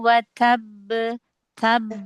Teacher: Kalau wakaf memang jangan dinaber, ya. Tidak berlaku nabar pada qalqalah yang bertasdid ketika waqaf.